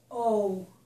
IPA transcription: oʊ